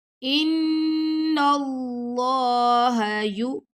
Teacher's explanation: نون پہ غنہ کیا، پھر نون کو ہم نے اللہ کی لام سے ملا دیا